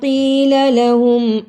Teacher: یا مدہ کو ادا کیا، لام کو جلدی پڑھا